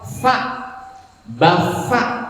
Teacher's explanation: Tapi lamun bacaan Quran mah tapi fa nanti gigi atas ketemu bibir bawah